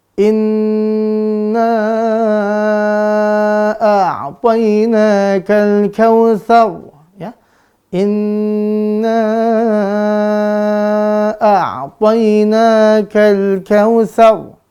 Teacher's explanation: inna di sini nun bertasydidnya dari khayshum.